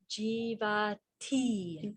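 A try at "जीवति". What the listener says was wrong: Good, he lives.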